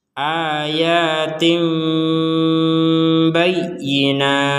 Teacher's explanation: Karena tanwin kasroh. Nah, karena di depannya ini adalah huruf ba, maka yang tin barusan yang kita baca tin itu akan berubah menjadi tim, tim. Kemudian setelah kita bilang tim, barulah mengucapkan huruf ba.